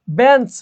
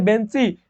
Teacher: বেঞ্চ, বেঞ্চ থেকে বেঞ্চি, দিশ থেকে দিশা, সবগুলো শেষে কি আছে, সবগুলো শেষে নতুন করে স্বরধ্বনির আগমন আছে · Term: অন্তঃস্বরাগম